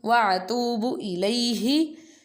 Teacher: ha pronounced from the bottom part of throat